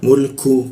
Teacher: Jadi ada hembusan ketika dia membaca ku